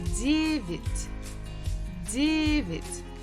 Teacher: Stress falls on first syllable.